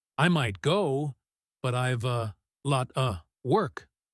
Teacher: Even with all the weak forms the meaning is crystal clear because of the stress on go lot and work.